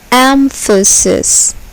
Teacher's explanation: here the first syllable is accented